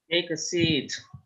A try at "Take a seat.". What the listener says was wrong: Yeah, that's perfect. Well done. Nice.